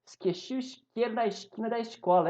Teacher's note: O povo que mais chia é o carioca.